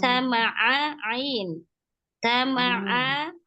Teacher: ainnya itu makhrajnya di tengah tenggorokan, fathah itu dengan membuka mulut, membuka mulutnya atau membuka rahang